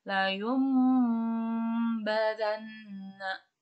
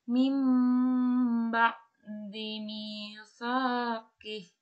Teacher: cara membacanya diubah menjadi mim dengan tempo gunah yang dipanjangkan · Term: iqlab